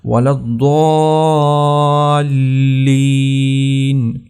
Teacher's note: تو اس کو آپ نے اچھی طرح سے، ایک تو ضاد کے اوپر یہ شد ہے، اس کو سختی سے پڑھنا ہے، اس کے بعد دیکھیں الف کے اوپر مد ہے تو اس کو لمبا بھی کرنا ہے، اور اس کے بعد جو لام ہے اس کے اوپر بھی شدہ ہے تو لام کو بھی سختی سے پڑھنا ہے، اس کو آرام سے نہیں پڑھنا، ولا الضالین، لام کے اوپر آپ نے سختی کرنی ہے۔